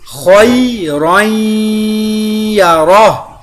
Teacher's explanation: ایابہم، خیرًا یرہ، یہاں پہ خو کے ساتھ یا لین کو ادا کیا، تنوین کے بعد حروف یرملون کی یا شدہ کے اوپر غنہ اور ادغام دونوں کیا، اور یہاں پر ہا کو وقف تام کی وجہ سے ساکن کر دیا، وقف مطلق بھی ہے اور تام بھی ہے۔